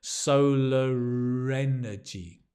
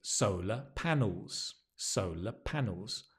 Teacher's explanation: We pronounce the R, it's linked.